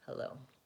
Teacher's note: And hello, we have vowel eh and vowel o. Hello, with stress on the first syllable